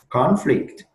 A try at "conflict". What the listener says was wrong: Conflict. Yeah, you need to stress on the first syllable, not the second one. Not conflict, but conflicts.